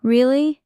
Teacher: Voice goes up. Shows surprise. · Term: rising tone